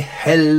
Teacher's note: the Kentish dialect tended towards “e”, rather than “i”